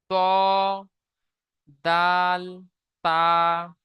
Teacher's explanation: জিভের আগা সামনের উপরের দুই দাঁতের গোড়ার সাথে লাগিয়ে উচ্চারিত হয় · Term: 13 নম্বর মাখরাজ